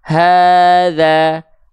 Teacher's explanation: diayunkan dengan nada pun enggak apa-apa contoh hza Hnya di sini tetap kadarnya dua kali Ayun tapi nada pelafalan kita enggak ngayun tapi datar boleh H asalkan ini yang terpenting dua harakatnya terjaka terjaka lagi